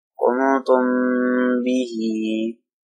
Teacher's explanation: If a ba comes after a meme saakinah, ikhfa shafawi is done within the meme saakinah, gunna is done.